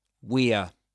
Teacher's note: when it's the contraction, it's a schwa only